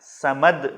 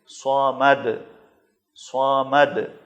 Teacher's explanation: اگر آپ نے اس کو باریک پڑھا تو وہ سین ہو جائے گا، سمد نہیں پڑھنا ہے، صمد موٹا کر کے، اور اس کو صحیح مخرج کے ساتھ ادا کریں گے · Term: صاد